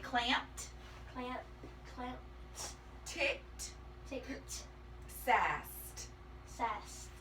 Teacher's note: that e d can make a t sound too